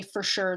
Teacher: I'm taking that vowel that four vowel and just collapsing it into this schwa R sound